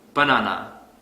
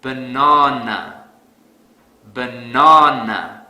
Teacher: because I don't stress the second syllable so to fix this I will stress the second syllable really hard